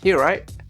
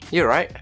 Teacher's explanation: I'm just dropping the T at the end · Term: glottal stop